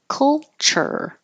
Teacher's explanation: And then you're going to have to curl the tongue back for the R.